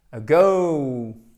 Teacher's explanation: C'est un E atténué et c'est la prononciation dans la majorité des cas en anglais des voyelles qui sont non accentuées. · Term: schwa